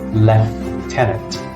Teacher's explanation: look at the American accent first this is pronounced Lieutenant lieutenant in British English it's even more irregular it's pronounced left tenant with the F sound here